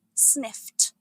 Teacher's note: It's pronounced sniffed with a crisp t ending.